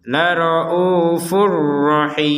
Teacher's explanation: untuk yang la raufur rahim ini kita masukkan tanpa dengungan.